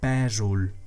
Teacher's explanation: So you pronounce it as E. And that O is actually pronounced as a U because it is not stressed.